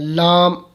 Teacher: جیسا کہ مخرج نمبر 9، زبان کی کروٹ، زبان کی کروٹ اس کے آخر سے نوک تک کا حصہ جب اوپر ایک داڑھ اور دانتوں کے مسوڑوں سے لگے اس سے لام ادا ہوتا ہے، یعنی ہماری جو نوک زبان ہے اس کو آپ دانتوں اوپر والے دانتوں کی جڑ سے لگائیں تو لام ادا ہو جائے گا